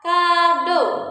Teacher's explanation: bunyi vokal O, madya, atas, belakang.